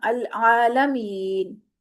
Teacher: می کو یا مد ہے تو ہم نے 2 حرکت کھینچا. العالمین، جب نون کی زبر پڑی ہم نے تو اس کو 2 حرکت ہی کھینچا.